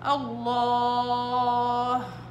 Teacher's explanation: لما نيجي نوقف على كلمة الله لفظ الجلالة بنوقف عليها كيف؟ بمد، ايش؟ مد عارض للسكون